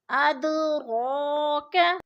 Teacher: اب اد پہ جو ہے قلقلہ ہو رہا ہے، دال ساکن ہے اور حروف قلقلہ میں سے ہے تو ادھر قلقلہ ہو رہا ہے یعنی ہم نے اس کو تھوڑا سا ہلا کر پڑھنا ہے. ادراک رو کے اوپر کھڑی زبر ہے، کھڑی زبر کو بھی ہم نے تھوڑا سا لمبا کر کے پڑھنا ہے کیونکہ کھڑی زبر کھڑی زیر الٹا پیش حروف مدہ کا قائم مقام ہوتے ہیں.